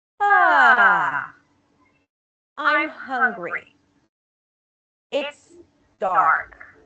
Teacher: falling intonation usually associated with statement where we start and then we drop down